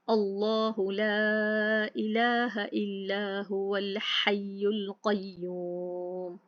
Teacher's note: अल्लाह सुब्हानहू तआला के इस्म से पहले ज़बर या पेश होगी, लाम जलाला पुर पढ़ा जाएगा